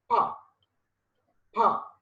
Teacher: complete close and sudden release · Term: complete closure